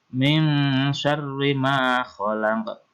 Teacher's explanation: di sini ada nun mati ketemu dengan shin, di mana hukum bacaan adalah ikhfa atau berdengung